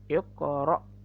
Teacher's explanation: huruf ko bertanda sukun itu adalah qalqalah, mantulnya ke huruf o